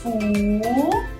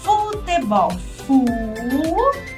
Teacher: Ó, a língua lá no céu da boca. Então, é o L, não fez biquinho.